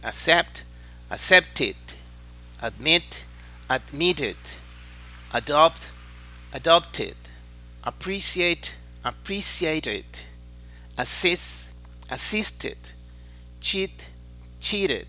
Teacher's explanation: Los verbos que terminan en ted, en ted, se pronuncia tit, tit, con una i un poquito ligera.